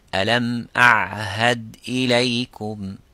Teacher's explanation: the ayn is in the middle, which is the middle part of the throat, which is not in the same point of articulation as ha.